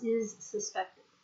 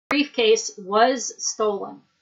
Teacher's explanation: if there are two S's together, you make a Z sound with the first S